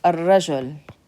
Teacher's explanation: So when it's a letter that is shamsi, harf shamsi, sun letter, we're going to skip over the lam, take that alif and simply connect it to the ra